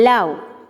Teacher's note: tap fifth type is lateral sounds a lateral consonant is produced the oral passage is blocked at the center but open at the sides english has only one lateral consonants that is as in love